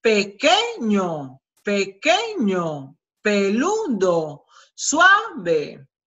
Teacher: No es la última, sino la penúltima, la que lleva la sílaba más intensa, más fuerte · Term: graves o llanas